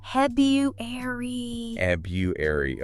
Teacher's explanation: if you want to be technically precise, especially maybe in more formal speech, you keep that second R